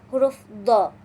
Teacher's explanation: Do ini keluar dari sisi lidah atau kedua-duanya bertemu dengan dinding di dalam gigi geraham paling atas. Nah, pengucapannya memerlukan tekanan dan sentuhan yang kuat antara tepi lidah dan juga gigi geraham kita atau gigi geraham paling atas.